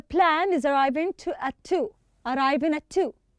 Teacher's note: When you are reading arriving, you don't pronounce the ga.